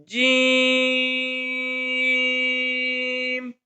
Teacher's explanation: الف، با، تا، تا، جیم. یہ جو جیم ہے یہ زبان کے درمیان اور تالو کے درمیان سے ادا ہوتا ہے